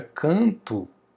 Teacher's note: Se eu falo a palavra canto, ó, esse an aqui, ó, eu falo o som do a somente esse n é apenas uma marca de nasalização. Então, eu não vou entender o N como um som, eu vou entender apenas como uma marca de nasalização.